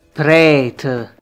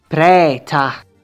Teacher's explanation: all the words end with a vowel and not with the schwa sound